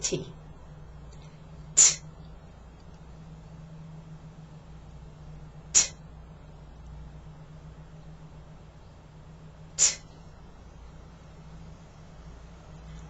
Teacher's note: sound doesn't use your voice so it sounds like this T you must hear the puff of air after you say the T sound